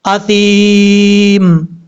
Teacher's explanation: کیونکہ یا ساکن سے پہلے زیر ہے، اس لیے یہ یا مدہ ہے، ایک الف کی مقدار لمبا کر کے پڑھا جائے گا، یہی یا مدہ کی تعریف ہے، یعنی یا ساکن سے پہلے زیر ہو تو یا مدہ ہوگا۔ اثیمن، جب وقف کریں گے تو میم ساکن ہو جائے گا، اثیم، اس طریقے سے۔